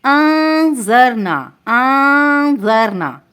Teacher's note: نون ساکن کے بعد زال آ رہا ہے، تو زال باریک حروف میں سے ہے، تو یہاں پہ اخفا جو ہے باریک ہوگا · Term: باریک اخفا